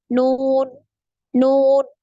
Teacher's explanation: ketika kita mengucapkan huruf nun ada getaran di hidung